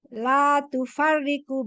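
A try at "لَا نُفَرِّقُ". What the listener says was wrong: Bukan tufariku ini, nufariku. Bukan tu. Bukan tu ini. La nufariku.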